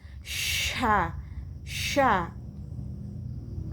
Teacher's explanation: Tafashi, berhamburan angin di mulut